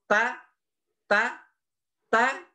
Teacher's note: ta ta ta berada pada belakang gigi seri yang atas